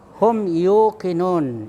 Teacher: Kemudian hum yuqinun, ya, mim sukun ketemu ya itu izhar syafawi. Nah, jadi mimnya itu dizaharkan, ya, jelas ditutup mulutnya. Kemudian ketemu 2 bibir, ya, jadi ditutup mulutnya.